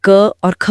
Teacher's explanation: अगर आप गले पर हाथ रखकर क और ख बोले तो गले में कोई खास कंपन महसूस नहीं होगा। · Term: अघोष